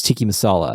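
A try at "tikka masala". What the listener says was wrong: Yeah, I've never heard anyone say it like that, but I appreciate your pronunciation. You said tiki. You did.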